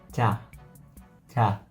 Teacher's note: yang ca itu bagian tengah sampai belakang lidah yang menyentuh rahang atas